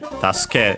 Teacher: Notice also from my pronunciation that we have the U in su barely heard if at all because it's between unvoiced consonants